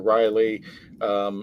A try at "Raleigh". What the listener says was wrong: Raleigh. Pronounced Raleigh. You said rally.